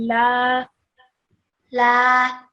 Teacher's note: So we prolong this lam sound, la sound, for 2 seconds. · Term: alif madda